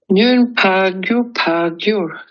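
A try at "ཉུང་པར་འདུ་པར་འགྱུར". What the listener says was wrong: Attention, tu as dit « nun par gyur pas ». Attention, c'est « nun par du par gyur ». Et c'est du par.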